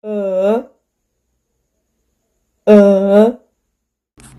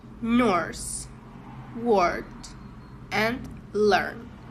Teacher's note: This sound /ɜ/ is a long central vowel. The tongue is in the middle of the mouth and the lips are unrounded. The mouth is slightly open and the sound is long.